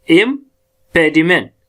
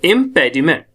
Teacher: इम थोड़ा धीरे से आता है और प का हम ज्यादा स्ट्रेस करते हैं